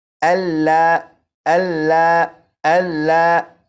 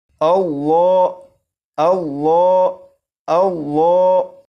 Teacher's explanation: لفظ اللہ کے لام کو پور یعنی موٹا پڑھیں گے